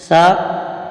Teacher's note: इसका मखर जबान का सिरा और ऊपर के दांतों के अंदरूनी किनारे से सा अदा होता है